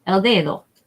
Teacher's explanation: the emphasis goes on this first syllable